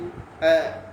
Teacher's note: அது எப்படி உச்சரிக்கணும்னா அதை தாழ்ந்த சவுண்டோடு உச்சரிக்கணும் தாழ்ந்த சவுண்ட்னா உதாரணத்துக்கு சொல்றேன் தாழ்ந்த சவுண்ட்னா எப்படி அ ஆ கிடையாது எப்படி